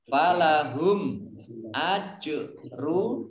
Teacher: jim sukun, bacaan kolkolah, dibaca memantul